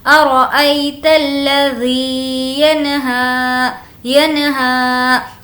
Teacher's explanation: یہاں پر نون کی آواز کو ظاہر کر کے پڑھیں گے کیونکہ نون ساکن کے بعد ہا ہے اور ہا حرف حلقی کے لیٹرز میں سے ہے، اس لیے · یا لین کا، بالکل کھینچ کر نہیں پڑھیں گے، ارأیت الذی، ذی کو کھینچیں گے کیونکہ یا مدہ